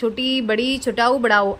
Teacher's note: संवृत, इन वर्णों का उच्चारण करते समय मुख बहुत कम खुलता है